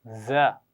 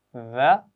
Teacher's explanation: पहली दो आवाज़ें हैं, दोनों बारीक हैं, फ़र्क सीटी और बगैर सीटी का है।